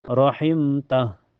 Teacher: Huruf hijaiyahnya itu huruf ta ya, awalnya berharakat fathah. Jadi cara bacanya mim sukunnya dibaca jelas. Rohimta di sini kita waqaf tidak ada hukum ya kalau waqaf. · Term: izhar syafawi